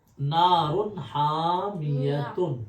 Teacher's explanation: اظہار کا مطلب ہے وہاں جلدی سے پڑھیں گے، ناک میں آواز بالکل بھی نہیں جائے گی۔